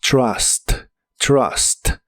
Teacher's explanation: La u se pronuncia como una a normal de español y como la t fuerte de inglés la empiezas con la punta de tu lengua más arriba de los dientes, suena fuerte como trust.